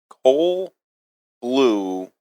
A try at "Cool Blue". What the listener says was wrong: Coal blue or cool blue? Cool. You said coal blue.